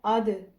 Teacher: حمزہ اور آگے دال ساکن ہے اد، تو زبان کی نوک جو ہے وہ ثنایا علیہ یعنی کہ سامنے والے دو دانت جو ہیں ان کی جڑ کے ساتھ لگ رہی ہے، تو یہاں سے ہمارا دال کا مخرج جو ہے وہ ادا ہو رہا ہے۔